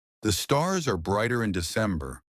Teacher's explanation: Americans love their R sounds, but they pronounce them softly. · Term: The soft R sound